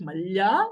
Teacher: in Cypriot Greek, you get malya with a longer palatal L